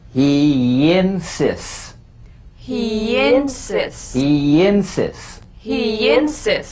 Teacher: Linking words that end in the Y buzz. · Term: The Y link